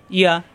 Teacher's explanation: ইয়া যাবর ইয়া, জিব্বার মাঝখানে উপরে চাপ দিয়ে